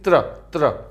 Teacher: जब मैं त्र का उच्चारण कर रहा हूं तो आपको सुनाई दे रहा होगा त, र और उनके साथ स्वर